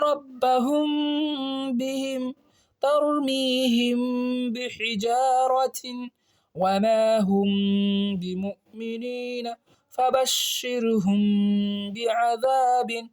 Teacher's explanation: میم ساکن کے بعد با گیا تو یہاں پہ اخفاء شفوی ہوگا، غنہ کریں گے